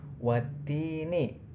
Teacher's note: ada huruf ta berharokat kasroh diikuti ya sukun, namanya mad tabi'i. Panjangnya 2 harokat.